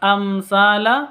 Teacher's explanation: mim mati bertemu dengan tsa jelas bacanya amsala mim matinya jelas tsanya juga jelas karena apa Karena izhar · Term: izhar syafawi